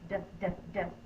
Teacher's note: When I say the D-D-D sound, my mouth is open and my tongue is tapping behind my teeth, tapping on the roof of my mouth like a drum. D-D-D.